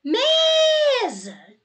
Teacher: você viu que a sílaba que se prolongou foi o me realmente Esta é a sílaba tônica